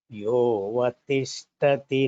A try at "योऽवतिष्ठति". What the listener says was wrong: Yovatishtati. Tha Mahaprana should be clearer.